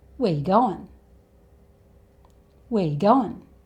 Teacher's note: So "where" becomes "whe(uh)" And it doesn't even sound like he says the word 'are'. And 'you' becomes the 'yuh' sound again.